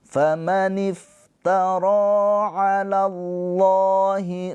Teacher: Lafaz Allah dibaca dengan tafhim.